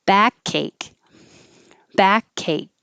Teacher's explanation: so the last k i hold it but the middle k will connect to the a